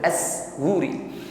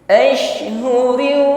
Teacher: shin ketika sukun lebih tampak sifat tafashinya, intisyar riha fil fami, menyebar angin, luas anginnya di dalam mulut kita